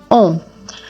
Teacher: for on, your lips are pushed forward and rounded. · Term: on sound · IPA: /ɔ̃/